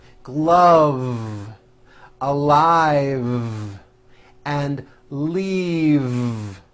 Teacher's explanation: an unvoiced F the word is leave with a voiced V keep the voicing going throughout the whole word and voice the V leave like that if you stop the voicing at the end